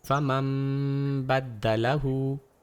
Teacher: اس کی ترجمانی نون کے اوپر ایک چھوٹی سی میم کے ذریعے کی جاتی ہے۔ ہونٹوں کو مکمل طور پر ایک ساتھ ملانا چاہیے اور میم کی آواز ناک کے راستے سے گزرتے ہوئے میم کے ذریعے آواز لگانے کے بعد منہ کو با کہنے کے لیے تیار رہنا چاہیے۔ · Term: اقلاب